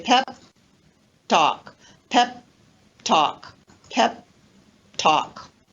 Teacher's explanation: have stop plus stop consonant or stop plus affricate consonant and in this case the first stop consonant is not released · So instead of saying pep talk, I don't release the final P. I leave my lips together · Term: unreleased consonants